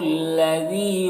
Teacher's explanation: ذال کو باریک پڑھیں گے، یا مدہ ہے، اسے ایک الف کے برابر کھینچیں گے۔